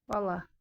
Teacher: Bala burda da vurğu birinci düşmüş oldu.